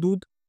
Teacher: মহাপ্রাণকে অল্পপ্রাণ করে উচ্চারণ করছে